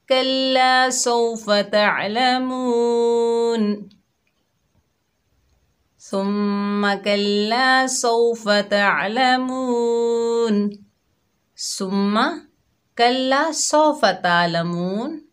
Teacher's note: عین کو حلق کے درمیان سے ادا کریں گے